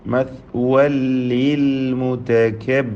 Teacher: തൻവീനിനെ പൂർണ്ണമായും ലാമിലേക്ക് ലയിപ്പിച്ച് മണിക്കാതെ ഉച്ചരിക്കുക